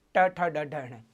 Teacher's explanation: जहाँ पर जीभ मुड़ेगी, मुड़ करके ऊपर प्रहार करेगी, तब आपके ट वर्ग का उच्चारण होगा